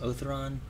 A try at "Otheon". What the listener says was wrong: There's no There's no R. Otheon